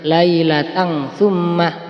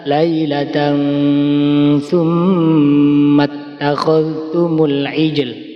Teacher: Lailatan, kemudian dikasih mendengung 2 ketukan atau 2 harokat. Lailatan sum, nggak boleh dibaca lailatan summah.